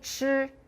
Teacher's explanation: Can you feel more air for 吃? That one's aspirated. Everything else is the same.